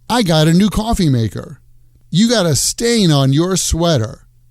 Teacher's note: in spoken American English we tend to drop the contracted form of have so instead of saying I've got people often just say I